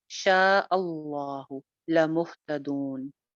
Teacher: شاہ کے اوپر مد ہے، حمزہ کی وجہ سے آ رہی ہے، اس کو بھی دو الف لمبا کریں گے · لفظ جلالہ کو موٹا کریں گے کیونکہ آگے جو ہے پیچھے جو ہے وہ حمزہ کے اوپر سوری زبر تھی